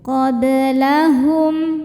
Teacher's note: Huruf ba sukun dihukumi qalqalah sugro. Karena ba sukunnya sukun asli dan ada di tengah bacaan. Cara bacanya dipantulkan dengan pantulan yang kecil. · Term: qalqalah sughra